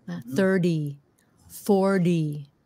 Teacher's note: Try to replace the T sound with the D sound.